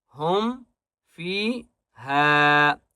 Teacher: فا کو ایک الف کی مقدار کھینچ کر پڑھیں گے اور ہا کو بھی ایک الف کی مقدار کھینچ کر پڑھیں گے